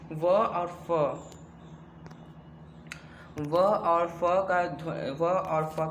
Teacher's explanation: निचले होठ का और ऊपरी दांतों का संपर्क होता है, इन दोनों में संघर्ष होता है, तब ये क्या, व और फ, व और फ का जो है, एक मिनट, व और फ का जो है ध्वनियाँ निकलती हैं। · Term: दंतोष्ठ्य